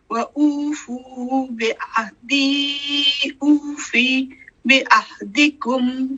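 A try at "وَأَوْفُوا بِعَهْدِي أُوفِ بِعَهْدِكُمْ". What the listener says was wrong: اوفی نہیں ہے, اوفی بعہدکم, اوفی کو فی نہیں,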